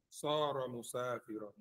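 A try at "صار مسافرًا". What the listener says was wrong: Right, don't say musafiran. Where's the tanwin? Musafiran. Say musafiran. When you're speaking and you pop those tanwins like that, that's the clearest you can be. When you say sara musafiran, musafiran, sara musafiran.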